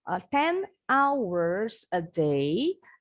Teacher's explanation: kata yang pertama itu kan diakhiri dengan bunyi huruf konsonan n nah ini bunyinya kita Sambungkan dengan bunyi kata pertama dari kata Ours